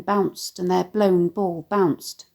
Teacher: the staccato plosive /b/ sounds in quick succession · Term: alliteration